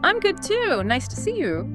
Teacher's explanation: Perhaps letting your voice fall slightly at the end, signaling completion.